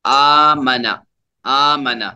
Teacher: حمزہ کھڑا زبر آ، دو حرکت کے برابر کھینچیں گے